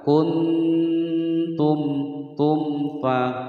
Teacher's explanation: Kuntum tum fa mim sukun bertemu dengan huruf fa. Dibaca dengan jelas, tidak boleh dipantulkan, tidak boleh didengungkan.